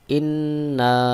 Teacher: ইন্না গুন্নাহ রয়েছে এবং এক আলিফ টানও রয়েছে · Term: ওয়াজিব গুন্না